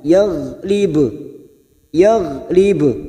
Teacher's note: terdapat huruf ba yang dibaca wakaf, maka kita pantulkan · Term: qalqalah